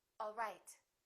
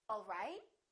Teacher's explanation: one is falling intonation and one is rising intonation